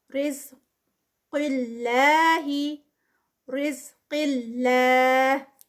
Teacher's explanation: قاف جو ہے وہ ہیوی ہوگا، کسرہ کے ساتھ آ رہا ہے تو اس طرح سے بہت ہیوی پروناؤنس نہیں ہوگا، تھوڑی سی ہیوینس اس کی کم ہوگی.